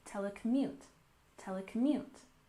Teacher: We have the main stress on the last syllable, telecommute, telecommute.